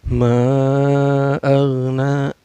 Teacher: Cara bacanya mad zaid munfasil ini dipanjangkan 4 harakat atau 5 harakat ya